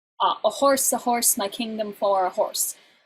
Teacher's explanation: the word horse always lands on a stressed syllable